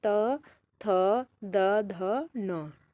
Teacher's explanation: जीभ दांतों का स्पर्श करे तो वही हमारे क्या कहलाते हैं? दंत वर्ण कहलाते हैं